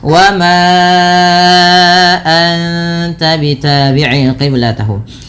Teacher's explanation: Panjangkan suara ma sepanjang 4 atau 5 harakat karena ia termasuk bacaan mad jaiz munfasil, yang dimana kalau mad jaiz munfasil harus dipanjangkan sepanjang 4 harakat atau 5 harakat, tidak boleh 2 kalau dalam jalur imamnya Imam Syatibi.